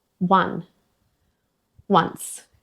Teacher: some words beginning with o, like one and once, even though it's spelled with a written o, it starts with a w sound.